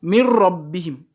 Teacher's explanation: Quand je dis mir rabbihim, je passe du mim directement au ra sans chanter, sans faire de gunna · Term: idgham